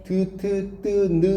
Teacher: 윗니 뒤쪽에 잇몸인 치조에 가닿아서 내는 소리 치조음이라고 하는 건데